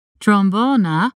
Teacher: if you're trying to say the word trombone in Dutch then you can start with an uh sound trombona and then let your tongue drift up a little bit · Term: schwa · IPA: [tʀɔmˈbɔːnə]